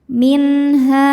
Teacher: nun dibaca secara izhar atau jelas. Jadi masih bunyi n ya dan tidak ditahan. Minha. Saat berhenti di ha, hukumnya mad tabi'i dhahiri. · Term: izhar halqi